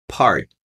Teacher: eu vou explodir o P